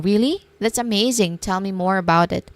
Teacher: remember a rising tone for really shows genuine interest